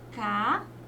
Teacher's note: Percebam que ao separar as sílabas, ficam duas sílabas. E a última sílaba é a sílaba tônica. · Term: oxítona